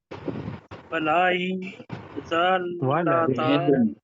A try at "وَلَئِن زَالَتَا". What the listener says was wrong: وَلَئِن زَالَتَا نہیں زالتا ہے، زالتا ہے، زلہ آپ نے پڑھ دیا نا،